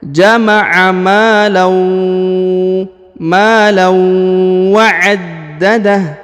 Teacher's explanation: waw berharokat tasdid, maka ditahan ditekan lalu didengungkan 2 harokat